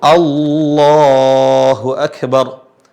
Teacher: kalau di sini sebelumnya adalah fathah baik itu di huruf lam jadi lam itu dibaca tebal hanya pada kalimat Allah kalimat yang mulia ini yaitu kalimat Allah